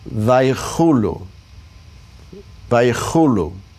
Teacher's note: Remember the chaf here is going to get the guttural sound.